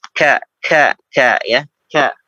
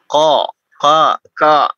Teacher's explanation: huruf kaf itu adalah dia posisinya tipis ya. Istifal ya. Suaranya ke bawah dia. Tidak ko, enggak, tapi ke bawah.